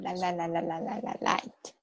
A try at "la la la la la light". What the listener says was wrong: Yes, exactly. Exactly. That was perfect pronunciation.